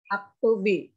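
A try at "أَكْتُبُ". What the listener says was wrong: Ini karena bunyinya bi kan karena ada ya nih. Ya, di sini baknya berbunyi i karena ada ya. Kalau ya nunnya dihilangkan berarti tidak ada lagi alasan dia jadi bi. Jadinya aktubu.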